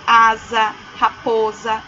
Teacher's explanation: s com som de Z entre vogais